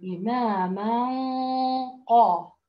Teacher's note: التفخيم بده ينتقل إلى الغنة اللي موجودة عندنا ، فهذه خصوصية لهذا الحرف إنه بعدها حرف في استعلاء. نداء